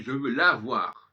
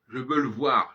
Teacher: Le cas classique que j'ai encore abordé hier, le fameux masculin et le féminin, dans le la, on a la voyelle, dans le masculin, on évacue la voyelle.